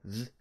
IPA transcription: ð